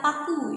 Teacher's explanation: Karena pita suara itu dia tidak bergetar ketika kita mengucapkan bunyi p ya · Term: bunyi tak bersuara